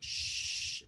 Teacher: So here, this mouth movement, shh, so my lips are rounded, shh, feel your throat, shh, my motor is off. It's an unvoiced sound, shh. But then when I turn my motor on, a very different sound, but the exact same mouth movement.